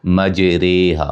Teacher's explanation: را کے نیچے زیر ہو تو را باریک ہوتی ہے، تو جب امالہ کریں گے پھر بھی یہ را باریک ہی ہوگی